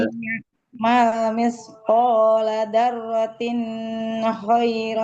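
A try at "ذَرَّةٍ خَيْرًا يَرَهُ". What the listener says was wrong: Tin tidak ditahan ya. Ini izhar.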